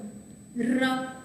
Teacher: ર છે એમાં દાંતની સાથે પેઢાને પણ સ્પર્શ થાય છે. એટલે આમ જોયું તો તાળવા બાજુ પણ સ્પર્શ થાય છે. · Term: દંત્ય પ્રકંપી ધ્વનિ